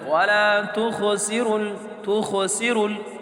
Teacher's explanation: ख मोटे हरूफ में से है तो इसको मोटा पढ़ना है। लेकिन ख में झटका नहीं करना क्योंकि ये हरूफ कलकला में से नहीं।